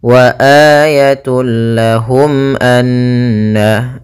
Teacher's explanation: mimnya harus jelas tanpa ditahan.